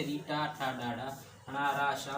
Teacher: मूर्धा से री टा ठा डा डा णा रा शा बोला जाता है।